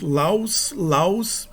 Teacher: O acréscimo do S produz a queda do D.